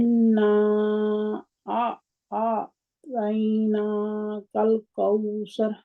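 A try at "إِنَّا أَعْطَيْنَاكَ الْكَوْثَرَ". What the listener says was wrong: अब आपकी तौ जो है वो चली गई कहीं ना, थोड़ी सी आवाज आई है उसकी। तोई तोई तोई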